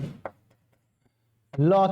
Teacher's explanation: पार्श्व का मतलब होता है बगल में, तो जब भी लॉ का उच्चारण करते हैं तो वायु जीभ के बगल से होकर गुजरती है, इसलिए इसे क्या कहा जाता है, पार्श्विक। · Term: पार्श्विक ध्वनि